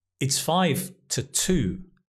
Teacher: Because the to here is not stressed. It's the weak form. To. Again, it uses the schwa.